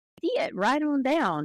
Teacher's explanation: the Southern drawl where you have a vowel and you kind of you elongate it and you break it into several different vowels, like see it right on down, that kind of thing.